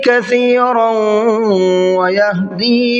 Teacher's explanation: تنوین کے بعد میں واو ہے، ادغام یرملون کا قاعدہ ہے، غنہ کر کے پڑھیں گے۔ وَيَهْدِي بِهِ كَثِيرًا، کثیروں کے سا کو بھی سافٹ پڑھنا ہے۔